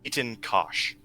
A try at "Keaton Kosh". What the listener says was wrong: Keaton. You're kind of losing the K with your Scottish. All I heard was Eaton.